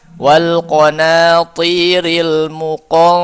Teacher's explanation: huruf to tebal. Jadi dengungnya juga tebal.